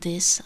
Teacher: I use a D instead of TH